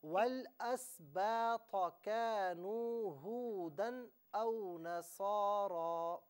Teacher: کانو میں واو مدہ تھا، اسے کھینچنا تھا. اسی طریقے سے نصارہ میں صاد اور را دونوں کو ایک ایک الف کی مقدار کھینچ کر پڑھنا تھا. · والاسباط میں تو کو پر کر کے پڑھنا تھا